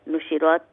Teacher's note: ra is full mouth for the fatha